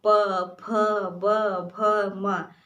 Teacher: जैसे आप प बोलते हैं तो आपके दोनों ओष्ठ एक दूसरे से स्पर्श हो रहे हैं, प, फ, ब, भ, म।